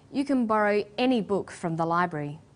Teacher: When the word any is stressed, this tells us that we're talking about an unrestricted quantity or unlimited choice.